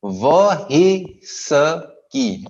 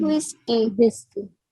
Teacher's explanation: Whis लंबा जाता है. की छोटा आएगा. और ह की आवाज जरूर आएगी.